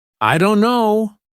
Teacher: Instead of pronouncing every letter, many native speakers say, "I don't know." The T sound is dropped completely. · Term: dropped sounds